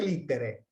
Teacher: El diptongo ae lo podemos pronunciar e, si adoptamos una pronunciación más evolucionada